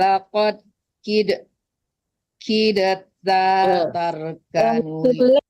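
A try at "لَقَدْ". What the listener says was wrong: Enggak, terbalik ya. Tidak itu tidak boleh dikalah-kalahkan, tapi lakadnya yang dikalah-kalahkan. Barusan Anduang bacanya lakat, nggak ada kalah-kalah dal. Lakad baru dikalah-kalahkan dalnya, kitnya enggak langsung masuk ke ta ya.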